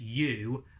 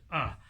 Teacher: sometimes it's pronounced u which does use some lip movement and sometimes it's pronounced uh which doesn't really use any lip movement